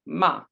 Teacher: the fourth tone says falling ma